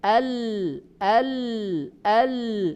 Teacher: Bahasa Arab bergeser ini adalah inhiraf namanya. Suara yang harusnya keluar dari tengah karena di tengah ditutup oleh lidah sehingga bergeser dari tengah ke pinggir kanan dan kiri dan keluar.